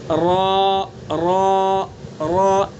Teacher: زبان کا کنارہ اور کچھ زبان کا پچھلا حصہ، ان کو جبکہ ثنا علیہ رباعی کے مسوڑوں سے ملائیں گے. ثنا علیہ رباعی کے مسوڑوں سے زبان کے کنارے اور پشت کو ملا کر کے ادا کریں گے. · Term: را کا مخرج